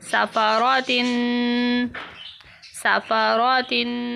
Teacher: سین زبر سا، فا زبر فا، صافا، را زبر را، صافارا، تا دو زیر تن، صفاراتن، صفاراتن. تنوین کی وجہ سے غنہ کیا جائے گا